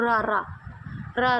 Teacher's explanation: ਹੁੰਦੀਹ ਜਿਵੇ ਤੁਸੀਂ ਬੋਲੋ ਰਰਾ ਰਰਾ ਬੋਲੋਗੇ ਤੁਹਾਨੂੰ ਮਹਿਸੂਸ ਹੋਊਗਾ ਵੀ ਤੁਹਾਡੀ ਜੀਭ ਤੇ ਕਿਤੇ ਨਾ ਕਿਤੇ ਕੰਬਾਹਟ ਮਹਿਸੂਸ ਹੋਊਗੀ · ਕਹਿ ਦਿੰਦੇ ਆਆਂ ਜੀ ਕਾਂਬਵੇ ਠੀਕ ਐ ਇਹਨਾਂ ਦੇ ਉਚਾਰਨ ਸਮੇਂ ਜਿਹੜੀ ਜੀਭ ਦੀ ਨੋਕ ਹੈ ਉਹ ਬੁੱਲ ਨੂੰ ਝੁਟ ਝੁਟਾ ਕੇ ਦੋ ਤਿੰਨ ਵਾਰੀ ਛੂੰਦੀ ਹੈ ਤੇ ਕੰਬਾਹਟ ਪੈਦਾ ਹੁੰਦੀਹ ਜਿਵੇ ਤੁਸੀਂ ਬੋਲੋ ਰਰਾ ਰਰਾ ਬੋਲੋਗੇ ਤੁਹਾਨੂੰ ਮਹਿਸੂਸ ਹੋਊਗਾ ਵੀ ਤੁਹਾਡੀ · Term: ਕਾਂਬਵੇ ਵਿਅੰਜਨ